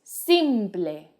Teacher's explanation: In English, the last E disappears completely, but in Spanish, it's actually the opposite.